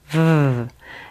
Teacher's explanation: V is a voiced sound which means you can feel some friction or vibration between your upper teeth and your lower lip you make the V Sound by placing your top teeth against · friction or vibration between your upper teeth and your lower lip you make the V Sound by placing your top teeth against your lower lip like this V and you'll release your voice out of that